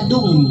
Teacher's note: Jadi dimasukkan ke mim dengan di dengungkan ya jadi arti idqam itu memasukkan nun mati kepada Ma kemudian · ditahan dunnya tidak Dun tapi dum Kemudian didengungkan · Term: idgam